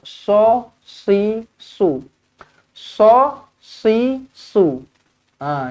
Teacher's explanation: Huruf sod dia tebal sikitlah daripada huruf sin. Jadinya kalau baca dia so si su.